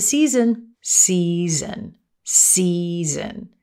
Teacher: we turn on our voice the vocal chords vibrate and we get the z sound